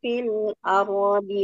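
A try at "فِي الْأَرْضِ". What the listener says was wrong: Sekarang pada huruf kata fil ardi. ya, fil ardi. Ro-nya tebal, Bu. Ardi.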